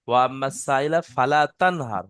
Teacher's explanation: এখানে ফালা তান, নুনটা গুন্না হবে না, ইজাহারের স্বাভাবিক। নুন সাকিনের পরে হরফে হলকি ছয়টি, হামজা, হা, আইন, হা, ওয়াইন, খ এর মধ্যে হা এসে নুন সাকিনকে বিনা গুন্নায় জাহির করে তাড়াতাড়ি পড়তে হবে।